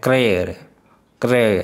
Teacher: हाँ, क्रे मूर्धा में होता है